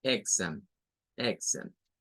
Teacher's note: No es una E, es una I corta.